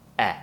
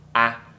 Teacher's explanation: The tongue needs to be down low, right behind the bottom teeth, the bottom of the mouth. And the e is a very similar shape, but we lift the tongue up so the mouth will close a little bit more